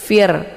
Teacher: Di sini ada ra sukun yang sebelumnya berharokat kisra. Nah, ra sukun ini dibaca tarqi ya, tipis. Fir, dengan cara mulutnya terbuka lebar.